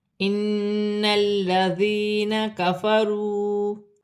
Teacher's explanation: نون مشدد میں غنہ ہوگا، لام مشدد ہے، لام مشدد کو نون کی حرکت کے ساتھ ملا کر پڑھا جائے گا۔